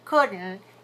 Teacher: If you say through your nose, she couldn't, even if you don't put a T on it, if you have the nasal sound, it is perceived as negative